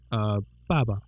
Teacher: the first word will have a tone, and the second word won't have the tone. So like, baba is brother.